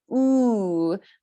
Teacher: our tongue is going to be high in the back of our mouth, and our lips are going to start closed and small and rounded.